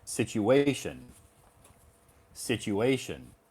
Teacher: so the emphasis is on the third syllable